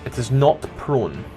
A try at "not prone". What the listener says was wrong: Your accent makes that really difficult. So the difference between not and knocked.